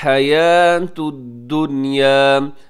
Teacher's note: حیات میں حا کا خیال رکھیے گا، یا کو لمبا ضرور کیجیے گا کیونکہ اس کے اوپر کھڑی زبر ہے